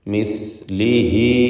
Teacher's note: മിസ്ലിഹി, സ തൊണ്ട നാവിൻ്റെ അഗ്രവും അഗ്രത്തിൻ്റെ മുകൾ ഭാഗവും മേലെ മുൻപല്ലുകളുടെ അഗ്രവുമാണ്. മിസ്ലിഹി, ഹ ദമീറിന് മദ്ദുസ്സിലത്ത് സൂറ നൽകി 2 ഹറക്കത്തിൻ്റെ അളവിലുള്ള തബീഇയ ദീർഘമാണ് നൽകുക